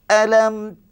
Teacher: mim tu nyata tanpa dengung